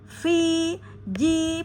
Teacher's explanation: pastikan fi dua harakat karena ada ya sukun. Kemudian huruf sebelumnya berharakat kasrah pada fi maka fi dibaca dua harakat.